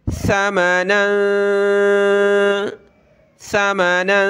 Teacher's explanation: یعنی یہاں ہم نے اخفا کرنا ہے، ناک میں ساؤنڈ پیدا کریں گے۔